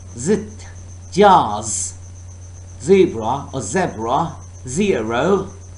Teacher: Air is forced through tongue and alveolar ridge. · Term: alveolar sound